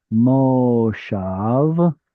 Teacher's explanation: The difference is that moshav has stress on the end and has a kamatz.